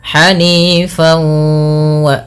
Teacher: Nah, di sini idgham bi gunnah juga dikenal dengan idgham naqis, yang dimana masih sedikit menyisakan bunyi suara nun ya. Sehingga dinamakan dengan idgham naqis, tidak kamil secara utuh, hilang secara utuhnya.